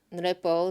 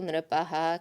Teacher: the visarga drops away, becomes an O